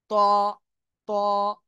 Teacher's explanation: জিহ্বার আগা সামনের উপরে দুই দাঁতের গোড়ার সাথে লাগিয়েও এই অক্ষরটা উচ্চারণ করতে হবে মোটা আওয়াজে।